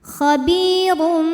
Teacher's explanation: ada hukum iqlab karena ada tanwin dammah yang menghadapi huruf ba maka bunyi tanwin diganti bunyi mim sukun jadi m